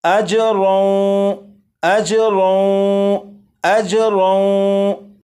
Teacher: اسے اجرن نہیں پڑھیں گے بلکہ تنوین کو واو میں ادغام کریں گے اور اس طرح پڑھا جائے گا اجرون، اجرون، اجرون، یہاں سے یہاں تک 3 مرتبہ میں اور اس کے بعد 4 مرتبہ آپ، اجرا وہم مہتدون، اجرا وہم مہتدون، اجرا وہم مہتدون، 4 مرتبہ۔